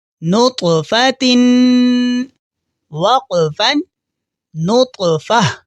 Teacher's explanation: طا پڑھتے ہوئے ہمارے منہ سے ایکو ساؤنڈ کی طرح آواز پیدا ہوگی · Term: قلقلہ